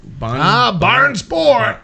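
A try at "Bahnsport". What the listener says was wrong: Barnsport? Not barn. Like German, like Autobahn.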